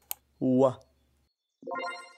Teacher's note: تقترب الشفاه من بعضها البعض في نفس الوقت الذي يقترب فيه الجزء الخلفي لللسان من الحنك الرخو لينتج الصوت و. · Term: Labiovelar